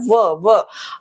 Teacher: व दंत भी आ रहे हैं, ओष्ठ भी आ रहे हैं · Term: दंतोष्ठ